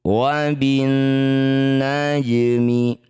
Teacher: Cara bacanya alif dan lamnya abaikan, bacanya langsung pada huruf yang bertasydid. Karena huruf yang bertasydid adalah huruf nun, ini sekaligus jadi bacaan gunnah musyaddadah. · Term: idgham syamsiyah